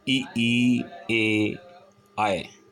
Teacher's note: जीभ का अगला भाग प्रयोग में आता है। अगले भाग, जीभ के अगले भाग के माध्यम से ये बोले जाते हैं। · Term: अग्रस्वर